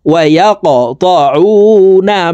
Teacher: কফ কলকলার হরফ উপরের দিকে ধাবিত করে ধাক্কা দিয়ে উচ্চারণ করতে হবে